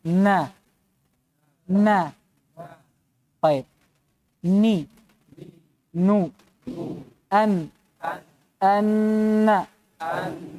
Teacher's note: untuk makhraj Nun yang keluar dari rongga hidung · disebutkannya dia itu bersamaan dengan gunah adanya dengungan yang keluar dari mana minalisum dari rongga hidung Ul Alal umiis